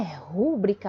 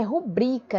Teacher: a sílaba tônica é no bri